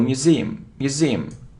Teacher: So you see that the stress is on the second syllable, museum, museum.